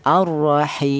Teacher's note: Tul itu artinya panjang yaitu panjangnya tiga alif atau enam harakat atau enam ketukan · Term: mad arid lukun